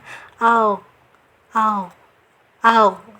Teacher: tidak ada angin, tapi dia rokhawah, tetap mengalir suaranya, tidak ada anginnya.